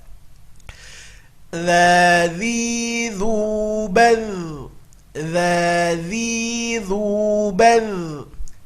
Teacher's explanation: Huruf dza harus keluar ujung lidahnya, kalau tidak dia akan berubah menjadi za.